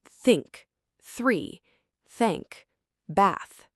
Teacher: And for the voiceless TH, you turn your voice off. It's just air, like a soft wind.